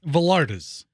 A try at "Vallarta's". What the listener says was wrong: It's not Vallarta, it's Vallarta. It's like Puerto Vallarta. It's not Vallarta. You don't pronounce the L's. You don't pronounce the double L's as L. It's not Vallarta. It's not Vallarta's. It's VALL.